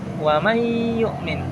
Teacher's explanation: dengan memasukkan suara nun sukun tersebut kepada suara pada ya sehingga seperti seolah-olah kita mentasdidkan suara ya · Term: idgham bighunah, idgham bigunnah